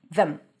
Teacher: I like to think of it as if there is no vowel and you're transitioning between the th and the m. Them. And sometimes you even drop the th.